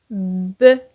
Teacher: Lors de la prononciation, les lèvres bloquent complètement le passage de l'air. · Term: obstacle total